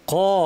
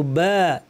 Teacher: যেমন ক এটা ভারী কিন্তু বা এটা আলিফটা পাতলা